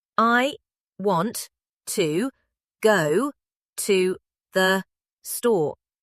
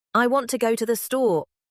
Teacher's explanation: The important words want and store get the weight. The words between them, to go to the, get lighter, faster, softer. · Seven beats, flat, mechanical. Correct, but not natural. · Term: English rhythm, equal stress on every word